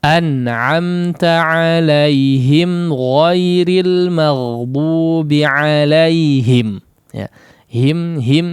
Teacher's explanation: gunnahnya terjadi hanya sejenak saja atau hanya satu harakat kalau mau hitung-hitungan ya.